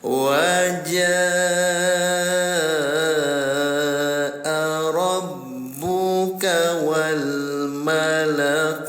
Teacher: Mad asli bertemu dengan hamzah dalam satu kata atau dalam satu kalimat namanya mad wajib muttasil. Cara bacanya bunyi jim yang ada tanda alisnya dipanjangkan selama lima rakaat atau diketuk lima kali ya.